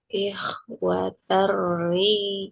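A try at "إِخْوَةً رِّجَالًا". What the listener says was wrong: kurang tipis. Coba ter saja. Ri, ya ikhwaterri. Ikhwater rijalan.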